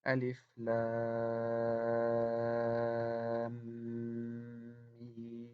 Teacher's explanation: we merge the mim sukoon in the end of the lam and the mim kasra in the beginning of the mim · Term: mad lazim harfi